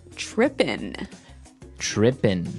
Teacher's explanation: It doesn't have the G at the end, which isn't really grammatically correct, but that's kind of the way it's pronounced. Yeah. We we would never say the G, right?